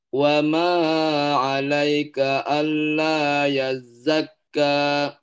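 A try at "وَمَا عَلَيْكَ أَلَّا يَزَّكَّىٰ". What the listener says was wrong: Wa ma 'alaika alla. Di mimnya jangan terlalu panjang. Wa ma 'alaika alla.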